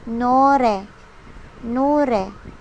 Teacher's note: Nasa gitna po siya ng dalawang vowels. Napapagitnaan siya ni vowel O at ni vowel E. Kaya po, ang tunog niya ay R. So, that is why siya ay naging nore.